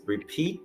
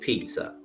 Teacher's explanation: repeat is stressed in the second syllable and pizza is stressed in the first syllable